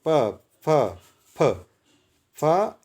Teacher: दोनों होठों से प जब भी बोलेंगे तो दोनों होठ जुड़े जाएंगे